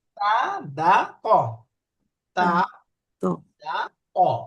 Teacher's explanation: এই তিনটা অক্ষর তা, দাল, ত। একই জায়গা থেকে উচ্চারণ হয়, জিহ্বার আগা উপরের দাঁতের গোড়া।